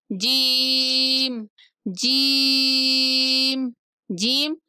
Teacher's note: جب زبان کا وسط اپنے برابر کے اوپر کے تالو کے ساتھ لگے تو وہاں سے جیم ادا ہوگا